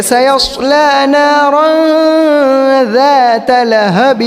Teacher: ذات لہب کے اندر جو ذال ہے اس کو کچھ لوگ زا پڑھتے ہیں